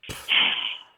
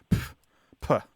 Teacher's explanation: there's this sharp plosive sound that you make when you are reacting dismissively. So you go, pff, like it's a sharp exhalation of air with a P sound at the beginning, like pff, puh.